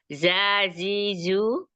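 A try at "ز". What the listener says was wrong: itu tengahnya keangkat tuh lidahnya jadi ada jimnya jangan jangan keangkat yang tengah lidahnya biar aja dia di bawah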